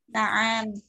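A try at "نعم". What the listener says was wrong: Perlu diperhatikan jawabannya. Ainya tidak usah dipanjangkan. Naam. Karena naam itu bisa berubah makna nanti.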